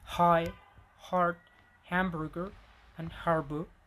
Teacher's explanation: Glottal fricatives. This one doesn't really have a voice counterpart in English.